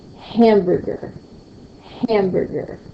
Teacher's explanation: I hear a louder sound, a little accent, a little punch on the word ham. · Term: first stressed syllables